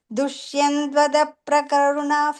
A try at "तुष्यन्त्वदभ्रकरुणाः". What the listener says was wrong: The third line, first word ta sound, tushyantvadabra. Ta sound, okay.